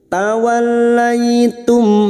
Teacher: Tawallaitum, mim sukun bertemu fa, idhar safawi. Mim sukun dibaca jelas tanpa mendengung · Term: idhar syafawi